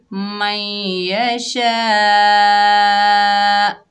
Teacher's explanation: आगे देखिए तो की अलामत है, इसे वक्फ़े मुतलक कहते हैं, तो यहाँ पर वक्फ करेंगे मैं यशा। वक्फ की हालत में हमज़ा साकिन हो जाएगा, और साकिन हमज़ा को हमेशा झटके से पढ़ा जाता है, हल्का सा झटका दिया जाता है।